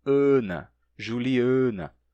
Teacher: É totalmente oral. É um A fechado sem nasalidade.